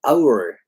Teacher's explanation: 上下の唇が近づくので、hour っていう時にちょっとだけ W みたいな音が出る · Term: intrusive W